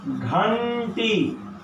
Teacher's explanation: घंटी में आधा टवर्गी ण होगा क्योंकि आगे ट है।